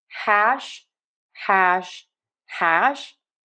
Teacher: we have almost no friction on that h sound. So we have hash hash hash. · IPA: /hæʃ/